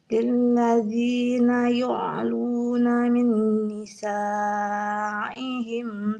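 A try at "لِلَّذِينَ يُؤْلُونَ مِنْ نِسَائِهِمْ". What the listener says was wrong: Yang pertama yu'luna, jangan yu'aluna. Nanti seperti ain. Nah, yu'luna.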